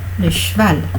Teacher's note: Vous avez le che, souvenez-vous en tout début, le che c'est une consonne sourde. Le V de cheval est une consonne sonore.